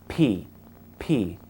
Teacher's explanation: the P sound is formed when we put our lips together p p the P has a popping sound that makes it